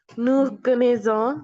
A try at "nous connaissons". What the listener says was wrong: double S আছে